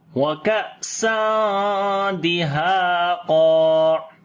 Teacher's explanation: حمزہ کے اوپر صفت شدت ہوگی, آواز بند ہو جائے گی. وَكَأْسًا تنوین کے بعد دال آ گیا, اخفا کریں گے, باریک اخفا ہوگا.